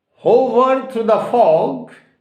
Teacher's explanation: Fog is a monosyllabic word and stress has been given on fog.